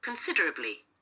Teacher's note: ตัวaเป็นเสียงชวาเหมือนเดิมนะคะแล้วก็ตัวyตัวนี้เป็นเสียงlongEแต่ว่าเวลาอ่านก็จะเหลืออินิด